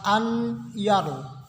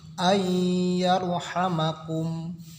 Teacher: Nah, karena ya tersebut termasuk huruf-huruf idgham, jadi cara membaca nun mati itu tidak jelas, n-nya tidak terdengar, jadi tidak dibaca an, tidak ada huruf n-nya, tetapi huruf n-nya dimasukkan ke ya. Jadi yang terdengar ada ya ganda, ai, tidak dibaca an yaru, tetapi ayyarhamakum.